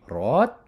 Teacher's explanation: you're raising it up just from your mid voice to your high voice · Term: High tone